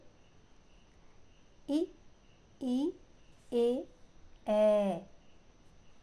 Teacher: भाग कुछ ऊपर उठा हो अग्र भाग मतलब आगे का भाग जब आप उनका उच्चारण करेंगे तो आपकी जीव जो है आगे से ऊपर उठ जाएगी · अगर स्वर कौन होते हैं? वे स्वर जिनके उच्चारण के समय जीवा का अग्र भाग कुछ ऊपर उठा हो।